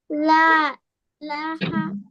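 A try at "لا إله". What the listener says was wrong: ইলাহা, লাতে একটু বেশি করে টানতে হবে।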